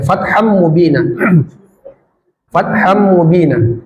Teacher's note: tanwin bertemu mim itu idgham bighunah. Dimasukkan lalu didengungkan. Jadi tidak dibaca fathan tapi fatham. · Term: idgham bi gunnah